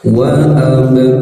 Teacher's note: ba sukun, ba bagian dari huruf qalqalah yang ketika sukun harus dipantulkan